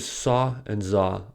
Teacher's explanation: The fricatives sa and za are also produced at this place of articulation. The tip of the tongue is at the alveolar ridge, but it does not touch the ridge. Air escapes from this narrow space.